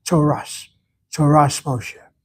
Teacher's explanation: They give a T sound for both the T with a dot and the T without the dot. · In Ashkenazi Hebrew, the tav with a dot is a T sound, without the dot, it's an S sound.